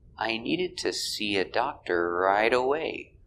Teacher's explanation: needed is a stop d link with the next sound